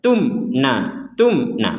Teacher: jadi tidak ada dengung atau samar sama sekali bahkan tidak ada pantulan